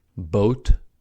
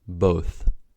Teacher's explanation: Ta is a voiceless stop and thaw is a voiceless fricative. Ta occurs at the alvolola ridge and thaw at the teeth. To has popping in it, but thaw can continue the sound. · Ta has popping in it, but tha can continue the sound.